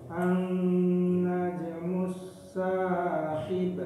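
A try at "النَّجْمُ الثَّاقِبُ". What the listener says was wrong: Nah, tinggal sa-nya lagi. Sa-nya ujung lidah. Sa ujung lidah. Najmus sa.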